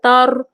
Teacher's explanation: র সাকিনের পূর্বে জবর আছে, তাই র এখানে রকে পুর করে পড়তে হবে